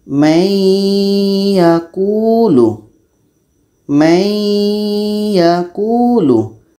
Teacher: proses masuknya nun mati ini ke ya itu dinamakan dengan Idgham naqis karena dengungnya pada Nun ini terbawa oleh ya · Proses dengungnya yang ada pada nun terbawa kepada ya. Ini namanya idgham nakish, masuk secara kurang sempurna karena terbawa dengung oleh ya.